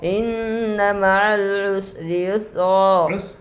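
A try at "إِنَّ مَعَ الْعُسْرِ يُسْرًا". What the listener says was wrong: سین پور ہو گیا, سین پور نہیں ہونا چاہیے. سین پور ہو گیا, پھر سے.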